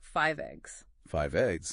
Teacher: The final consonant sound of one word basically jumps and connects directly to the starting vowel sound of the next word. Like a sonic handoff or a bridge precisely a sound bridge. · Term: consonant to vowel linking